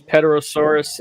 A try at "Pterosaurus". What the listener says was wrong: Pterosaurus. The P is silent. Don't say PETA anything, please.